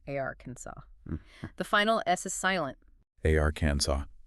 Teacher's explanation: Stress on the first syllable, AR, and it ends in a saw sound, Arkansas. The final S is silent.